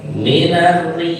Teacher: Di sini contoh bacaan ro yang dibaca tarkib atau tipis